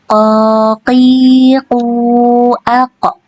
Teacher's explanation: huruf qof juga tidak mengeluarkan angin ya karena dia bukan huruf hanes ya jadi dia tidak boleh mengeluarkan angin. · Nah untuk membaca huruf qof antunnya bisa sambil tangannya di depan mulut ya untuk mengetahui apakah dia keluar angin atau tidak ya. Kemudian huruf qof ini dibaca dengan tebal dan ketika sukun dia dibaca dengan dipantulkan dan tebal juga pantulannya